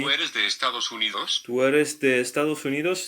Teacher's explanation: notice that the intonation at the end is rising